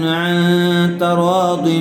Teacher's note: عن یہاں پر اخفا ہوگا، یعنی غنّے کے ساتھ اخفا کر کے پڑھیں گے